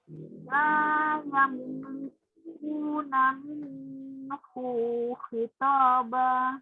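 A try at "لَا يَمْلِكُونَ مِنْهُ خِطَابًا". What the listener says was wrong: Bu-nya pendek. Jangan dibaca panjang. La yamlikuna minhu khitaba. Minhu khitaba.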